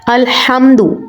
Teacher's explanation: تو حرف جو حا ہے، الحمد ورڈ کو اگر ہم پڑھتے ہیں، یہ قرآن پاک کا پہلا حرف ہے، اسی طرح نماز میں بھی ہم اس کو پڑھتے ہیں، تو یہ سورہ فاتحہ کا جو حرف ہے، ٹھیک ہے، تو اس میں ہم جب حا کو ادا کرتے ہیں تو حا کی جو اصل ادائیگی ہے اس کو ہم اپنے حلق کے درمیانی حصے سے ادا کریں گے، یعنی الحمد جب پڑھا جائے گا تو اس کو حلق کے درمیان سے ادا کیا جاتا ہے۔ · हा की जो असल अदायगी है उसको हम अपने हलक के दरमियानी हिस्से से अदा करेंगे। यानी अलम्दु जब पढ़ा जाएगा तो उसको हलक के दरमियान से अदा किया जाता है। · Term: حروف حلقی, हरूफ हलकी